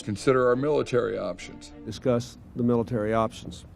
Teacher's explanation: he has that sort of clinton hoarseness